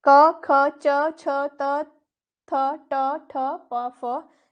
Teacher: ये ध्वनियां विशेषकर व्यंजन होती हैं जिसमें स्वर रज्जु में कंपन नहीं होता है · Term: अघोष